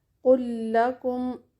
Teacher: ایک اور مثال دیکھتے ہیں، فلا یسرف فی القتل، یسرف کا فا اور فی کا فا دونوں مل جائیں گے، پہلا فا ساکن ہے اور دوسرا متحرک، فلا یسرف فی القتل قل لکم، قل کا لام ساکن، لکم کا زبر والا، قل لکم، دونوں لام مل کر ایک مشدد لام بن جائیں گے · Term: ادغام مثلین